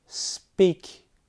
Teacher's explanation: in the combination with the sound so when we say speak all of a sudden there is no aspiration